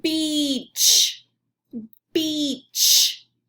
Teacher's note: watch your mouth when you say the ch sound it goes you stick your tongue against the back of your teeth when you say the ch sound